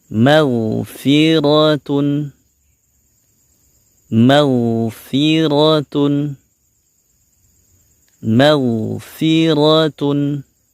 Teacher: Di sini ada huruf ghain yang sukun. Huruf ghain juga memiliki sifat yang mengalir ya, yaitu suara saja yang mengalir. Dan juga dia memiliki sifat yang tebal, sehingga kita juga menaikkan pangkal lidah kita untuk menebalkan suaranya.